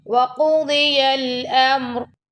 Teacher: القاف کو اور دوال کو دونوں کو موٹا پڑھنا آپ نے